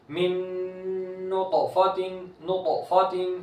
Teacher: ساکن ہے تو اس میں قلقلہ کر کے قلقلہ کے ساتھ پڑھیں گے، یعنی آواز طا کی لوٹتی ہوئی آئے گی